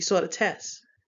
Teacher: You'll see he saw the test yesterday, and then he saw the test. And so that secondary t doesn't come out. We actually drop that. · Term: final consonant cluster reduction